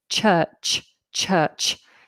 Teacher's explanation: With the CH, it's slightly plosive, so you have a slight explosion of sound,